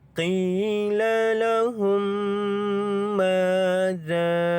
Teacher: Za ini kita panjangkan dia dengan kadar 5 harakat kerana mad asli huruf alif bertemu dengan hamzah dalam 2 kalimah. Di sini adalah mad jaiz munfasil.